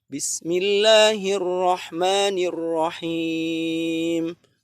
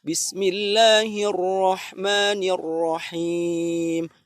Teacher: bacaan seperti ini itu kurang tafkhim roknya